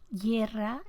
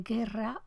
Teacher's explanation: En Chile hay una articulación peculiar que es la fricativa prepalatal para la articulación del fonema sonoro G, el sonoro velar